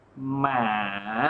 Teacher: nó xuất phát từ 2 xuống 1 và kết thúc ở đâu nhỉ, ở 4 đúng không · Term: thanh số 3